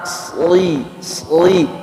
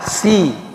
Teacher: Desisannya itu mirip dengan sin, cuman ada suara tebalnya di dalam, kayak menelan gitu, kayak ditelan. Sli. Kalau sin mah kan kayak dilepaskan. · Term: huruf shad